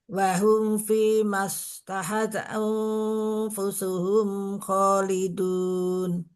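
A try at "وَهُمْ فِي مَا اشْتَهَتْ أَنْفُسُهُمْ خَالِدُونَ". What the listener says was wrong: Masya Allah. Jadi seperti itu, nggih.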